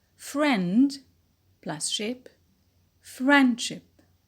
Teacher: there is no effect of those suffixes on the stress placement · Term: neutral or weak suffixes